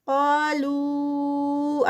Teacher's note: قا پہ 2 counts اور یہ ہیوی ہوگا